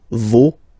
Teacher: Okay, so remember, even if you've got this final s, you don't pronounce it, as it was the case already for this word. No, you don't pronounce the final s